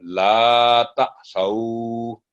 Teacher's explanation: الف سائلنٹ ہے، الف نہیں بولا جائے گا، صرف لا تعصوا.